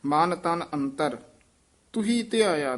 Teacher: ਤੁਹੀ ਉਚਾਰਨ ਕਰਨਾ, ਇਸ ਨੂੰ ਤੂੰ ਹੀ ਨਹੀਂ ਕਹਿਣਾ ਦਲੈਂਕੜ ਲਾ ਕੇ